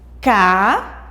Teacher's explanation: Se você encontrou a última, é antes de chegar na última. Então, caída, a sílaba mais forte é o I.